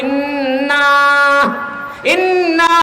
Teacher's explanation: এই যে আমরা ইন্না শব্দ উচ্চারণ করি, এটা নাকের ভিতরে উচ্চারিত হয়।